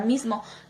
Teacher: palabra mismo, que al momento nosotros escucharla podemos darnos cuenta que la z no es una z sonora, es una sonorizada z sorda, y a continuación de esta está la m, que es sonora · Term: sonorización